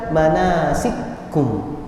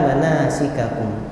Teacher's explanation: namun diidghamkan dalam qiraah Susi dan Dauri, dan maka dibaca manasikum, bukan manasikakum